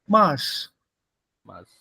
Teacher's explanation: You saw how that R is not pronounced. It gets merged with the vow.